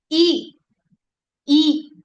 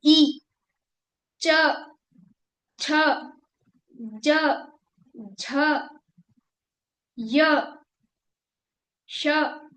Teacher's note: ये सब तालु से बोले जा रहे हैं।